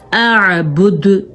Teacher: دال پہ کلکلا، دال کو ساکن کر دینا ہے